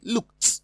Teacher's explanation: But in option D, ED is pronounced as T because it follows a voiceless sound, K, coming from the letter K.